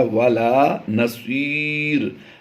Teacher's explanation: दो ज़ेर की तनवीन को वक़फ़ में हमने जज़म से बदल देना है। तो ये या मद्दा के बाद आर्जी सुकून होगा, यानी जज़म हमने खुद से लगानी है।